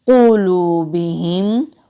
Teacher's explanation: वाव साकिन से पहले पेश है तो वाव मद्दा है, एक अलिफ के बराबर खींच कर पढ़ेंगे